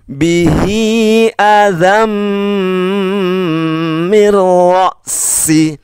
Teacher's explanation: Tanwin bertemu huruf mim ya. Mim tidak termasuk kelompok yang tidak dengung, berarti dibaca dengung.